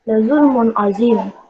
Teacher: karena ada huruf nun mati atau sukun bertemu dengan huruf ain dan cara membacanya jelas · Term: izhar halfi